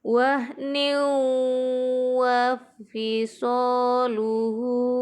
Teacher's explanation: Di sini tanwin bertemu huruf waw, dibaca idgham bi gunnah.